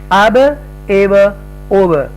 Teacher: तो हमज़ा ज़बर बा अब, यानी कि ये वाला हरकत वाला हमज़ा, इसके ऊपर जब आप जंप करेंगे या फिर इसके ऊपर मिलाएंगे, ज्वाइन करेंगे, तो ये साउंड इसका चेंज हो जाएगा. अब हरूफे कलकला में से है बा, जब साकिना हो तो अब की आवाज़ आएगी. और अगर हम ज़ेर डालते हैं तो इब, और अगर हम यहाँ पर अगर पेश डाल दें इसके ऊपर तो ओब, अब एब ओब.